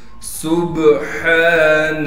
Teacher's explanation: سبحان سین میں سیٹی ادا کریں گے، سین کو پھر ہم با سے ملا دیں گے اس لیے کہ با ساکن ہے اور با پر قلقلہ کیا جائے گا اس لیے کہ با حروف قلقلہ میں سے ہے. ہا کو صاف کر کے گلے سے نکالیں گے